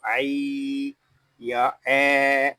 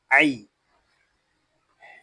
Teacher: عین یا زبر عی، یہاں یا لین ہو رہا ہے، اس کو کھینچ کر نہیں پڑھیں گے، اس کو عی یا اے ایسے نہیں پڑھیں گے، اس کو پڑھیں گے عی۔